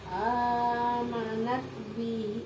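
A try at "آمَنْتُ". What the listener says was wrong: Amanat. Ini amanat. Aman tuh mana? Itu amanat.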